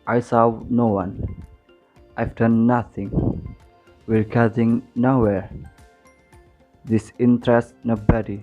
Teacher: no one, nothing, nowhere, nobody, often take the tonic.